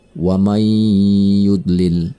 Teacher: nun mati bertemu dengan huruf ya Ini juga Idgham Bighunnah makan nun mati tersebut harus melebur kepada huruf sesudahnya